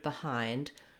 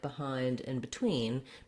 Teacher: in a word like behind, the stress is on hind, and so that BE gets a reduced vowel. In the dictionary, you'll see it as an I vowel.